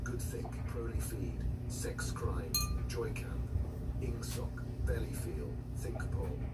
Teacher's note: words of two or three syllables with the stress distributed equally between the first syllable and the last